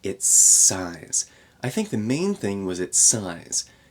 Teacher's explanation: connect these two s Sounds